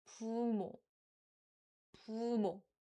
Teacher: So 부모, 부모, like it's not 부모, but 부모, 부, 부, 부. So it's in between the pu sound and bu sound. 부모, 부모.